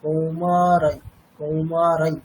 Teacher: হ্যাঁ, তাহলে অনুস্বারের পরে যদি ইয়াকার থাকে তাহলে কি হবে, অনুস্বারটা অনুনাসিক ইয়াকারের মতো উচ্চারণ করা হবে।